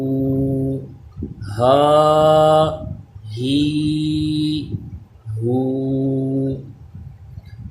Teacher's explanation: حلق کے نیچے والے حصے سے، یعنی اس میں سانس کی آواز مکس نہیں ہونی چاہیے۔ ہا کھڑا زبر ہا، حلق کے نیچے سے اس کی آواز آئے۔ · یہ ادا ہوتا ہے حلق کے درمیان والے حصے سے، اس میں سانس کی آواز آنی چاہیے۔ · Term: گول ہا